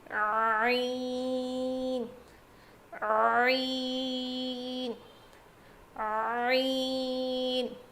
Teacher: حلق کے بیچ والے حصے سے ادا ہوتا ہے